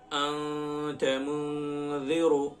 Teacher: نون کی آواز کو ناک میں چھپا کر پڑھیں گے تھوڑی دیر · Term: اخفا